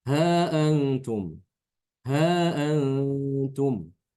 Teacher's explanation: Imam albazi dibaca Dua harakat saja